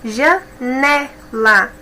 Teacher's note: O né é a sílaba mais forte, é a penúltima sílaba. Se não é a antepenúltima, não é proparoxítona.